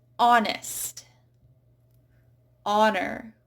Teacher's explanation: Then we have words where you just do not hear the H at all.